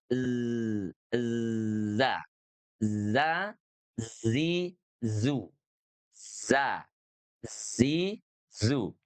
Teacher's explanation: makhrajnya ada di ujung lidah kita, berada di belakang gigi seri bawah. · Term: huruf zai